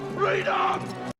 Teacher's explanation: we do not stress them because dumb is not important part free is the important part in the word or in the noun and for that reason it is stressed